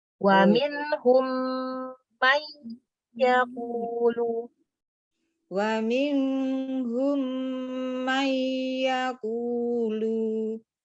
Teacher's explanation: ada idgham di mim sukun bertemu mim dan juga ada nun sukun bertemu ya. Jadi dibaca dengung yang lama itu ada dua.